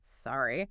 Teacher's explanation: A social sorry is fast. It's a blip. Sorry. A real apology is slow.